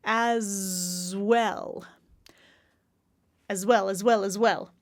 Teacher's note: that's a z sound even though it's written as an S